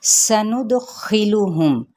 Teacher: سندخلہم، نون کی پیش کو دال کے ساتھ ملائیں گے، دال پہ پراپر قلقلہ کیا جائے گا جس کا مطلب ہے ہلانا، یعنی دال کو ہلائیں گے۔